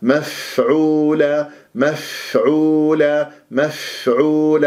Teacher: الفاء مخرج ضعيف، لازم أنت تجري الصوت والهواء يعني الهمس فيها حتى نسمع الفاء. والواو ساكنة قبلها عين مضمومة، راح تكون عندي مط طبيعي.